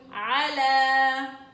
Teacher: عين فتحة ع، لام فتحة ألف صغيرة لا على. طبعا الألف الصغيرة هي اللي بتلفظ وليست الياء اللي انت شايفاها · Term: ألف مقصورة